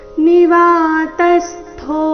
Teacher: ತ ಮೇಲೆ ಆಘಾತ ಥೋ ಮಹಾಪ್ರಾಣ ದೀರ್ಘ